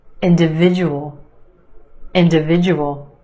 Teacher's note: five syllables in this word emphasis on the third syllable